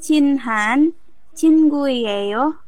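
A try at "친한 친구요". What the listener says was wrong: Cinan ya, bukan cinhan. Cinan.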